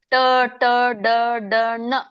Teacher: ಟ ಅಂದಾಗ ನಮ್ಮ ನಾಲಿಗೆ ರೊಟೇಟ್ ಆಗುತ್ತೆ ಮ್ಯಾಲೆ ಹತ್ತುತ್ತೆ